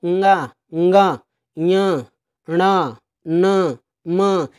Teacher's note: ये जो पंचम वर्ण होते हैं वर्गों के दोस्तों ये नासिका से उच्चारित होते हैं